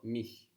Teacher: And again, no friction on the CH.